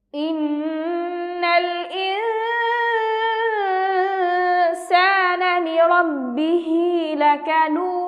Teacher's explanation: লাম জবর লা, কাফ জবর কা, লাকা, নুন ওয়াও পেশ নু, দাল 2 পেশ দুন, আমরা এখানে দেখতে পাচ্ছি যে মালায়া হরফে বামে হরফে ওয়াকফ হয়েছে, পাশাপাশি কলকলা হরফের উপর ওয়াকফ হয়েছে, তাই আমরা এখানে 3 আলিফ টান দিয়ে কলকলার প্রতিধ্বনি করে ওয়াকফ করব।